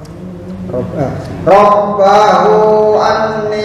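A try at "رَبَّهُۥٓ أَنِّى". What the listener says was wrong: panjang. Panjang. Hu ada tanda melengkung.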